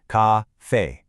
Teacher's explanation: Both high and flat. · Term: first tone